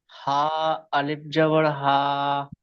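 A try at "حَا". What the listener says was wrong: মাশাআল্লাহ, পড়া অনেক সুন্দর হয়েছে।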